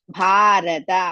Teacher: ಭಾ ಇಸ್ ದೀರ್ಘ ಅಂಡ್ ಮಹಾಪ್ರಾಣ ರ ರಸ್ವ ತ ರಸ್ವ coming to the second line third ಪಾದ